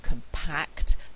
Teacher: in the adjective compact the stress is on the second syllable